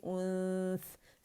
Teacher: سا کے مخرج کے قریب جائیں گے، ٹچ نہیں کریں گے سامنے کے جو دو دانت ہیں اوپر کے ، ٹھیک ہے ہمارے، تو ہماری جو زبان کی ٹپ اس · غنہ ریٹین کرتے ہوئے اور نون کو چھپاتے ہوئے سا کے مخرج پہ جائیں گی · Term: حرف اخفا